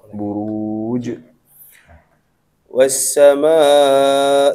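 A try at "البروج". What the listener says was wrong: pantulannya apa? Diperjelas lagi buruj.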